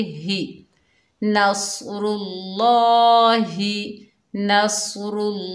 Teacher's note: हा के नीचे ज़ेर, बगैर खींचे पढ़ेंगे